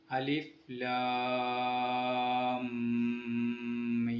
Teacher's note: ആദ്യത്തെ മീമിനെ രണ്ടാമത്തെ മീമിലേക്ക് ലയിപ്പിച്ച് ചേർത്ത് മണിപ്പിച്ച് കൊണ്ട് ഓതണം. ഇവിടെ 2 ഹർക്കത്ത് സമയം മണിക്കണം. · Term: ഇദ്ഗാം ഷഫവി